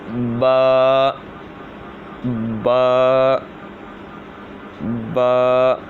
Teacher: با دونوں ہونٹوں کے تر حصے سے ادا ہوتا ہے